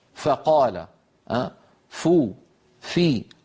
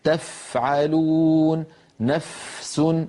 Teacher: فالمتحرك فيه همس، يعني لما نقول فقال، فو، في، كل هذه الفاءات فيها همس. لكن تفعلون، نفس، الفاء الساكنة همسها أوضح